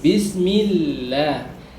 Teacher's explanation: kalau didahului huruf yang berharokat kasrah menjadi Bismillah, tipis